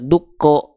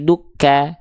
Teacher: karena vokalnya ketika fathah kan enggak dibaca dukko tapi dukka karena vokal a berarti tandanya huruf Kaf termasuk ke dalam huruf yang kadarnya tipis